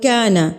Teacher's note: کاف باریک ہے تو الف بھی جو ہے وہ باریک پڑھا جائے گا